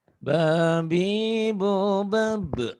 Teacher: Mim kecil ini pertanda bahwa bunyi tanwinnya, bunyi n-nya berubah menjadi m. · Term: iklab